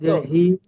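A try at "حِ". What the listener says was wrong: শক্ত হবে, শক্ত।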